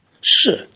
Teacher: And shi is something like, like something drop on the floor. It's a stress. Very short and abrupt. Shi. That is the fourth tone.